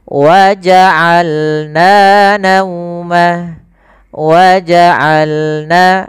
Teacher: Dari tengah tenggorokan kita lafalkan ain.